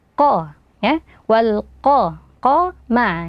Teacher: Qaf di sini memiliki fathah. Ketika sebuah qaf memiliki fathah, maka pengucapannya dilakukan dengan tebal.